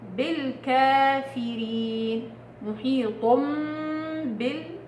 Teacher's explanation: النون في التنوين حولت الى ميم، والميم مع الباء اخفاء شفوي، فصار عندي قلبنا النون الى ميم وبعدين طبقنا حكم الميم مع الباء اخفاء شفوي، تمام؟